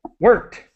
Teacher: the ED is pronounced as quickly as possible. No extra syllable.